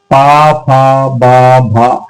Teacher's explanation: आप पा को बोल के देख लीजिए, पा, फा, बा, भा, हर एक बार में होठ टकरा रहे हैं, हर एक वर्ड को बोलते समय होठ टकरा रहे हैं, यानी ये हमारे होठों से बोले जाने वाले अक्षर हैं, इन्हें हम बोलते हैं ओष्ठ, ओष्ठ, ओष्ठ।